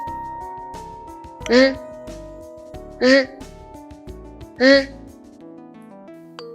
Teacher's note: it is a retroflex sound, meaning that the tip of your tongue should be curled and positioned against the roof of your mouth. To produce the r sound, lightly touch the roof of your mouth with the tip of your tongue and then release the air while vibrating your tongue against the roof of your mouth.